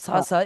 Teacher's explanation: সা সা মানে দুই দাঁতের মাঝখান থেকে হালকা। আমি বলি, আপনার জিহ্বাটা ঠিক হ্যাঁ, উপরের দুই দাঁতে রাখবেন, ভেতর থেকে শুধু একটা বাতাস হ্যাঁ, চাপ দেবেন।